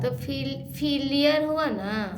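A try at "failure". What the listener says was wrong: E R को क्या पढ़ते हैं? ई आर को क्या पढ़ते हैं? अर। तो दोस्तों देखिए यहाँ पर अर है, इनका उच्चारण फीलियर पढ़ रही थी, तो यहाँ ये पढ़ेंगी, कैसे पढ़ेंगे यहाँ पर बताइए तो।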